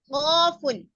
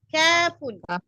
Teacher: Nah, tadi qaf tebal. Qafun. Sekarang kaf tipis.